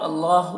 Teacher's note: اللہ مشدد حرف ہے تو پیچھے والے متحرک حرف نون سے مل کر پڑھا جائے گا، اور اللہ میں کھڑا زبر ہے، اس کو کھینچ کے پڑھیں گے، اور اللہ کے لام کو موٹا کر کے پڑھیں گے۔